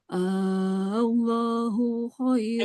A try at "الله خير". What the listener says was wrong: Panjangin lagi, tambahkan. Allahu.